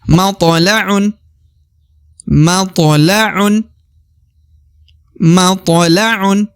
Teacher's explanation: Huruf to ya berada di tengah, to sukun atau to mati, maka harus dikolkolah atau dipantulkan ya, tipis-tipis ya.